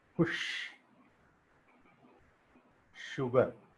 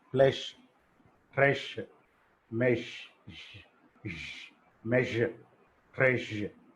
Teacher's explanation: The tongue is going close to the palate and the tip of the tongue is behind the alveolar ridge. That's why these are called palato-alveolar fricatives.